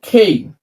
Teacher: এটার রাইট উচ্চারণটা হবে নট ক নট খ, দুইটার মাঝামাঝি, ক প্লাস বাতাস